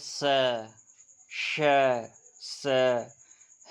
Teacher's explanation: ऊष्म व्यंजन जिनमें हवा रगड़ती हुई निकलती है, यानी कि जब हम उन्हें बोलते हैं तो हमारी हवा जो होती है वो रगड़ती हुई निकलती है।